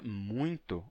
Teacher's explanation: na palavra muito, o que ocorreu foi uma nasalização do ditongo depois do M